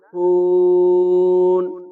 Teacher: বা থামা অক্ষ যাকে বলে থামতে যেটাকে বুঝায় সেটাকেই অক্ষ বলে এখানে অক্ষ করলে হুন তিন আলিফ টান হবে